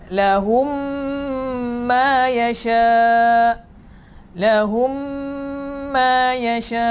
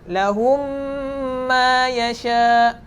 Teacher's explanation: Kita tak dengar suara mim yang pertama. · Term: idgham mithlain